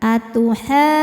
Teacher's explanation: Jadi kalau pakai nabar atuhajjunni. Jadi agak naik intonasinya ketika berpindah ke nunnya ya. Tapi kalau nggak pakai nabar cukup pakai gunnah dari nunnya atau dengung dari nunnya.